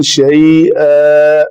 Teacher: دو زبر والی تنوین ہے تو الف مدہ بنا کر رکیں گے